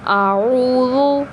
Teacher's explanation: زال کو نرمی کے ساتھ ادا کرنا ہے، زا نہیں پڑھنا۔